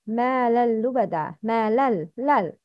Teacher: تنوين followed by لام. It's إدغام without غنة.